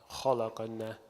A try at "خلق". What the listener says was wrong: Don't make the lam thick. Khalaq. Don't say like this. خلق. خلق. لق. Don't say kha. لق. Don't say laqa. لق.